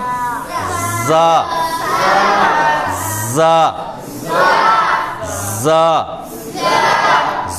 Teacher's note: सीटी की तरह वो सख्ती के साथ आवाज़ निकलती है ना।